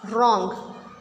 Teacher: We are not going to pronounce W, we will pronounce R. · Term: silent W